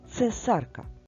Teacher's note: перший звук в слові цесарка це твердий приголосний ц